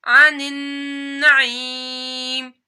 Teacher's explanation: عن نون مشدد ہے تو نون کے اوپر غنہ کرنا ہے